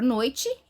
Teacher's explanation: Na palavra noite, né, nós temos aí uma vogal, né, que é o O, e uma semivogal, que é o I. Exatamente nessa ordem. · A palavra noite é um ditongo decrescente.